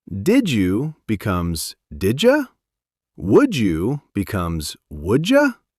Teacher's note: It's like the D and the Y had a baby and named it J.